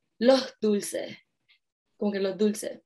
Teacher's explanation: where other countries might be very meticulous in saying those S's at the end, Puerto Ricans just aspire them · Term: aspiration of an S